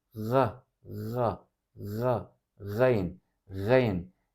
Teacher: söylediğim gibi baskı yaparak şeklinde yutkunur gibi çıkartarak bunu söylemek mümkün gayin harfi boğazın ağızla birleştiği noktaya hafif baskı yaparak böyle çıkartılır